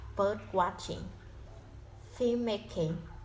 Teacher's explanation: for the composed noun, the first part is heavily stressed if the structure are as follows: the noun plus noun, noun plus verbing, verbing plus noun, and verb plus noun.